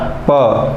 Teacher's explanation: प अगर हम बोलते हैं तो ये हमारा प, दोनों होठ मिल जाते हैं, अर्थात ये ओष्ठ इसका उत्पत्ति स्थान।